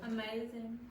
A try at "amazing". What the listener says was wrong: Now, do you hear it? Amazing. Now, was that z very clear?